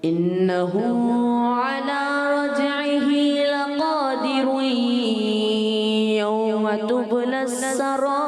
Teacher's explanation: جب ہم اس کو ملا کر پڑھیں گے تو ہو جائے گا لقادرون یوم. ادغام کا قاعدہ یعنی غنہ بھی کریں گے ملائیں گے.